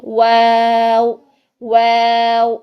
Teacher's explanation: واو تو بالکل دونوں ہونٹوں کو گول کرنے سے ہوتا ہے